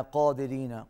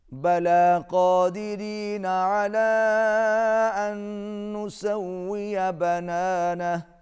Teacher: قاف موٹا، را باریک